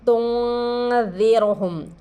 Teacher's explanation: یہاں را سے پہلے زیر ہے، اس را کو باریک پڑھیں گے